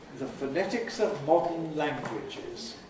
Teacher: weak vowels, schwas in the first 2 syllables, the the phonetics of, weak form of modern, pronounced with a syllabic nasal, the way I said it, modern.